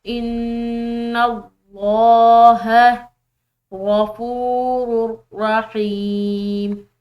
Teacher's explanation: علیہ ان اللہ، نون مشدد ہے تو غنہ کریں گے اور لفظ اللہ کی لام موٹی پڑی جائے گی کیونکہ اس کے پیچھے والے حرف یعنی کہ نون کی زبر ہے